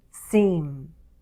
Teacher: With /m/, we force the air to go through our nose.